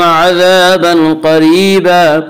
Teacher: अलिफ मद्दा को एक अलिफ के बराबर खींच कर पढ़ेंगे। अज़ाबन क़रीबा, अज़ाबन क़रीबा में इख्फ़ाए हकीकी होगा।